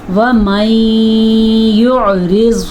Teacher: اچھا، یہ را باریک پڑھی جائے گی لیکن زواد پر پڑھا جائے گا، تو ان دونوں کو ملاتے ہوئے بعض کا لگتا ہے شاید ہم نے را پر پڑھ لی، لیکن آپ نے کوشش کرنی ہے کہ آپ را باریک ہی پڑھیں اور زواد پر پڑھیں